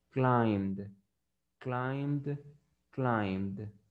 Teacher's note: también tiene vibración y la letra M está en la lista de letras con la que van a ponerle la ED y se va a pronunciar como D. Entonces la pronunciación correcta sería climbed, climbed, climbed.